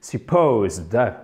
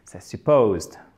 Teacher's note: OK? Accent tonique au milieu.